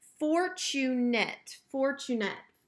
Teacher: I know it's going to end in ate, but it is making the schwa sound. We wouldn't say fortunate.